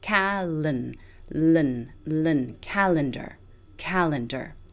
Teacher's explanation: all of our stress on the first syllable Cal calendar calendar notice that the e in the second syllable pretty much disappears just pretend it isn't there and go from the L to